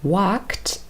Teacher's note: So we have walked, the infinitive form is walk, and k is the last sound in this verb in infinitive form, and k is an unvoiced consonant as well · when we add the next sound t, we just keep our vocal cords off and we just pronounce a t sound instead. And our body does this automatically.